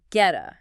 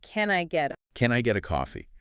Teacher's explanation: It doesn't sound like a sharp percussive T. No, it turns into what linguists call a flap T, which sounds almost like a very soft, quick D. It becomes a getta.